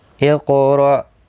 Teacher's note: حمزہ ساکن کو جھٹکے کے ساتھ پڑھا جائے گا